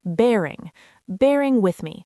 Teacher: The stress is on the first syllable of bearing.